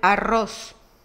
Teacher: Doble R, que representa la vibrante múltiple en el interior de una palabra